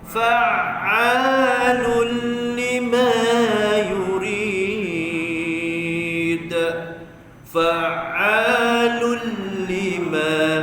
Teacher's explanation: Huruf ain masukkan, Tangan kerongkong jangan di hidung. Huruf ain bukan kat hidung. Sekira kalau kita tutup hidung, bunyi dia tidak terjejas huruf ain ni. · kena masukkan fa masuk ain, pertengahan kerongkong.